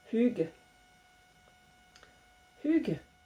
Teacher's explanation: vous prononcez pas trop le G, et puis surtout vous mettez le U avec le son qui sort, le U bué pour la prononciation.